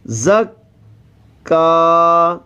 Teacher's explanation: زا سیٹی والے حروف میں سے ہے سیٹی کی سی آواز آئے گی